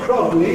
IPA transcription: k.r.ɒ.g.l.i